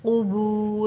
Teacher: ایک قاف نہیں کھینچا جائے گا، با ہی کھینچ کر پڑھا جائے گا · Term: حروف مدہ